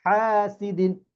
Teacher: হা গলা মধ্যখান থেকে